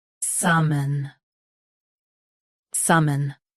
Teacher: Both US and UK have the same pronunciation of this word. Say sa softly, then mun. Stress sa.